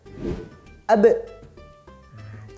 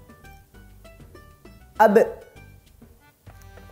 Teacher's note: Yang kuat ya, disukunkan kemudian dipantulkan dengan kuat.